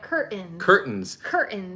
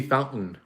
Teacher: the t disappears and it's just kind of like a guttural sound